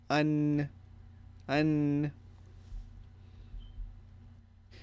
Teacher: Okay, but other times also when you have, if you have noon fatha, nun, dhamma, also there is a nasal component as well. But the nasal sound is most obvious when the nun has a sukun on it.